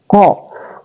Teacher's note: Kemudian ada qa, huruf aqsal lisan, keluar di pangkal lidah, qa. Kemudian ada sin, keluar di tarful lisan, qasa, jadi bacanya qasa.